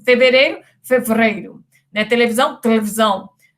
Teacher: no português de Portugal as sílabas pretônicas são reduzidas